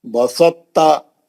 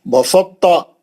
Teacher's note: ان کی ادائی میں تا کا اطباق یعنی موٹا پن باقی رکھ کر ادغام کیا جاتا ہے. یعنی آپ توئے جب تے میں چلے جاتا تو تے تھوڑا موٹا ہو جاتا کیونکہ اس کے اندر توئے گھس گیا. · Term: ادغام متجانسن ناقص